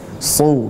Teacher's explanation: Yang jelas shad itu adalah tebal. Ketika dhammah maka dia harus mengangkat pangkal lidah.